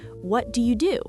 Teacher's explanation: The second do is the one that gets stressed.